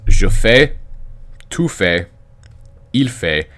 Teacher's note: because you don't pronounce the consonant on the end of the word they sound the same even though they're spelled differently